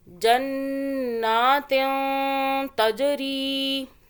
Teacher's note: جیم پہ قلقلہ کیا، جیم قلقلہ کا حرف ہے، جھٹکے سے پڑھیں گے. تجری، را یا زیر ری تھوڑا کھینچا ایک الف کے برابر. · ہم اس تا سے پہلے اس نون کو ہم اخفاء کریں گے، یعنی کہ چھپا کے پڑھیں گے. زبان کو اوپر ٹچ نہیں کرنا تالو سے، جہاں ہے درمیان میں رکھیں.